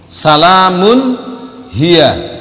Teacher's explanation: Salamun hiya, tanwin bertemu dengan ha. Ini harus dibaca izhar, jelas, tanwinnya jelas.